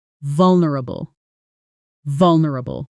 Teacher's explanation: Say it with me, noticing the stress on the first syllable.